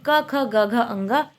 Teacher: यह पांच व्यंजन कंठ से बोले जाते हैं। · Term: क वर्ग